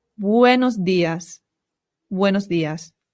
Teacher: An English person would say day, but a Spanish person would say they. When making the D sound, put your tongue right behind your teeth. It softens the sound. So instead of saying días, it becomes días.